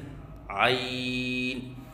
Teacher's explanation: عین کو وسط حلق سے ادا کریں اور 3 الف کے برابر لمبا کر کے پڑھیں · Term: حرف عین